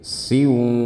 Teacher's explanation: ini ada tanwin bertemu dengan waw, idgham bi gunnah, dibaca dengan gunnah yang panjang